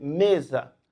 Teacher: Aqui nós temos 4 letras, 4 fonemas, mas eles não correspondem ao mesmo som. O S aqui, entre vogal, ele apresenta um som diferente, é um som de Z